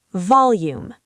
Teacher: Volume. Stress the first syllable.